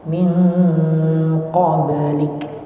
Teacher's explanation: Min qablik huruf ba-nya qalqalah.